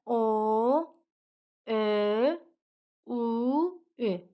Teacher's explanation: Unu da deyəndə dodağımız qabağa gəlir. Görürük ki, dodağımız qabağa doğru çıxır. Ünü də deyəndə və önü də deyəndə. · Oni dedikdə dodaqlar qabağa gəlir. Dodaqlar irəli gəlir. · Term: dodaqlanan saitlər